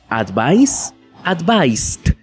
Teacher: en el caso de la s nos damos cuenta de que no hay vibración en ese verbo